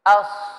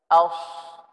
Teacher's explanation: Sebab huruf sad, as-sad keluar dari ujung lidah. Kalau ditambahkan dengan mulut, dengan bibir, berarti ketong sudah menyalahi makhraj.